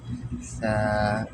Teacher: সা হবে অনেক নরম, সা নরম করতে হবে। আপনি জিহ্বাটা আপনার সামনের যে 2 দাঁত আছে, ঠিক আছে, উপরের সামনের 2 দাঁত, এখানে জিহ্বাটা লাগায় নরম করে বলতে হবে সা